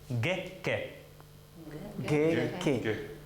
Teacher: Так, вот эти согласные, поскольку они произносятся с гласными переднего ряда, произносятся чуть-чуть мягче, чем по-русски